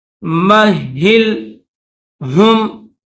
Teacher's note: ہا کے نیچے زیر اور اوپر تشدید ہے تو ہا کو دبا کر پڑھیں گے